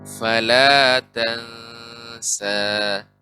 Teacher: Fala cukup 2 harokat saja, tidak fala.